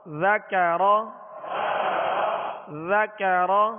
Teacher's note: ذال کو باریک پڑھیں گے اور نرمی کے ساتھ پڑھیں گے